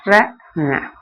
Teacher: நாவினது நுனி மேல்நோக்கி சென்று அன்னத்தை தொடும்போது ரன பிறக்கும் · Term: ரகாரம்